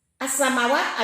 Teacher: Khalaqis samawati, as-samawat alif lam samsiyah, sebab alif lam bertemu huruf alif lam samsiyah yaitu sin. Cara membacanya alif lam wajib diidghamkan atau dimasukkan dalam huruf sin.